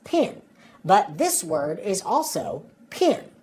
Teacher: for Southern Accents the vowel sounds I and E are pronounced the same way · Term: PIN pen merger